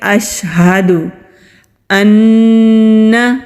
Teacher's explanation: نون کے اوپر تشدید ہے تو جب نون پر تشدید ہو وہاں پر غنہ ہوتا ہے، 2 سیکنڈ کے لیے آواز کو ناک میں چھپا کر رکھیں گے